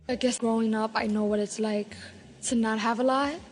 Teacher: new york latino english speakers have a particularly light l